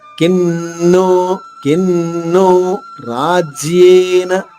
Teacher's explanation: అనుస్వరం తర్వాత నో అనే అక్షరం ఉంది కాబట్టి అనుస్వర ఉచ్చారణ కూడా నాలో అవుతుంది. ఇక్కడ 2 నాలు పలికినట్టుగా పలకాలి.